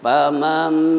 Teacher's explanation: karena nun ketemu dengan ba berubah jadi mim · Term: iklab